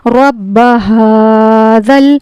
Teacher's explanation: ہا کھڑا زبر ہا ہے، اس کو ہمیں ایک الف کے برابر کھینچنا ہے، اور یہ والا جو ہا ہے یہ حلق کے سینے کی طرف والے حصے سے ادا ہوتا ہے، رَبَّ هَٰذَا۔